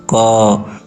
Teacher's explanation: जब हम लोग क बोलते हैं तो देख पा रहे होंगे कि अंत में अ का उच्चारण अपने आप ही होता है। जैसे क तो यहां यहां पर अ आ अंत में आ ही जा रहा है।